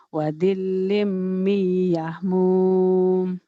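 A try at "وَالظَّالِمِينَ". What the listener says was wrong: Doanya jangan ke dal ya. ZHO wazi agak gitu. Wazilim, wazil, zil, zil, wazil, za wazilim.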